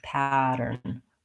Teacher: It sounds more like a D. You need a tight American R, and you end on an N. Pattern. First syllable, short second syllable.